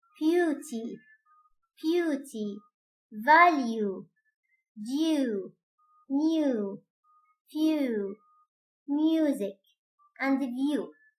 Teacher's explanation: it is important that we make a quick weak E sound before the following vowel. نكون إحنا أو نتأكد عند لفظ هذه الكلمات في أنه نلفظ صوت E قصير وضعيف. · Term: gliding consonant ye